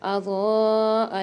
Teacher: اضاء میں ضاد کے اوپر بڑا والا مد آ رہا ہے مد منفصل تو اس کو ہم 5 الف مدار کھینچ کے پڑھیں گے